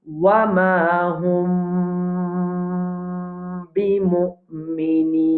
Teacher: Alors nous avons hum bimu'minin. Mim sakin, après il y a ba, c'est ikhfa mim sakin. Alors nous pouvons tenir le mim là.